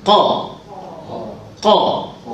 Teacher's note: Qaf ni atas sikit daripada kha, yakni di hujung di langit.